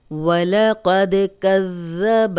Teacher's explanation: ذال کو نرم پڑھیں گے اور 2 بار پڑھیں گے